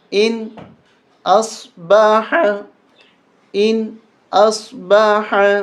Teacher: قل آرأیتم، حمزہ نون زیر ان، حمزہ صاد زبر اص، با زبر با، حا زبر حا، ان اصبح، یہاں غنہ نہیں کریں گے۔ نون ساکن کے بعد حروف حلقی جو 6 ہیں ان میں سے ایک حمزہ بھی ہے، اس وجہ سے ہم اس نون کے اوپر غنہ نہیں کریں گے